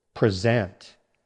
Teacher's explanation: Now the verb. Stress on the second syllable.